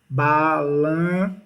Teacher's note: há uma vibração esse n sai pro nariz sai pelo nariz · Quando eles não tiverem isso aqui, desse jeito, como eles estiverem aqui, ó, balam, ó, entre uma vogal e uma consoante, que você está vendo aqui, esse N, a gente diz que aqui eu tenho um dígrafo vocálico, porque esse N, ele sai pelo nariz, ele é nasalizado